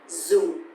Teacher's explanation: And also because the tone mark here is dấu huyền, so it's going to be down a little bit